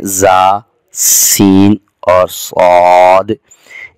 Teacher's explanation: ان تینوں حروف میں نیچے کے دانتوں کے پیچھے زبان لگ رہی ہے اور یہ تینوں حروف سیدھی کی آواز کے ساتھ ادا ہو رہے ہیں۔